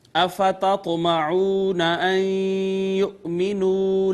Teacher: حمزہ کو ہلکا سا جھٹکا دے کے ہم نے پڑھا، طا حروف قلقلہ میں سے ساکن آ گئی، چھوٹا سا قلقلہ کیا ہم نے اس پہ، واو مدہ ہے ماقبل مضموم، نون ساکن کے بعد یا مشدد، لہٰذا ادغام بالغنہ، اس کے بعد حمزہ کو جھٹکے سے پڑھا، واو مدہ ہے، میم ساکن اظہار شفوی، دال پہ پھر قلقلہ، پھر الف مدہ، یا مدہ، نون ساکن کے بعد حرف اظہار، لہٰذا یہاں پہ اظہار، میم ساکن پہ اظہار شفوی۔